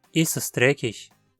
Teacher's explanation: Aqui, es se manteve como uma sílaba inteira e não como um simples S. Isso é consequência do verbo já terminar em S.